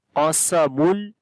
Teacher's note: Qaf we read in heavy sound due to isti'la letter.